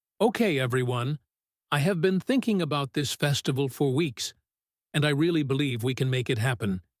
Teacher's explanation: She said okay everyone then a tiny break then I have been thinking about this festival for weeks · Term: thought groups